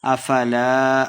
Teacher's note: افلا الف مد ہے، دو حرکات لمبا کر کے پڑھیں گے۔